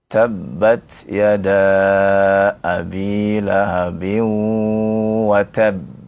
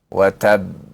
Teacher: Sedangkan yang kubra atau yang akbar ya, kita waqafkan lalu kita tahan dan kita qalqalahkan.